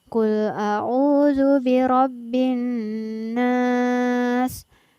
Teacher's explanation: Di sini ada huruf nun bertasydid, maka dibaca mendengung dan ditahan selama 2 harokat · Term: gunnah